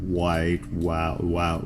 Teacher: the mouth is open, but there's a obstruction from the movement of the lips